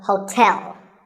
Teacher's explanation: there are two syllables like the english word tell as in tell me the stress is on the second syllable